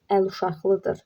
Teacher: Burada q, x kimi tələffüz olunacaq, çünki özündən sonra samit gəlib.